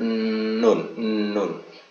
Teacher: Yang bagian lidah yang ketujuh ini nanti ujung lidah ya. Ya nanti ujung lidah bekerja sama dengan ya, bagian gusi atau pangkal gigi seri atas depannya, tapi di bawah makhraj, sedikit di bawah makhraj lam. Di situ atau dari situ keluar huruf nun, nun. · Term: nun yang dibaca jelas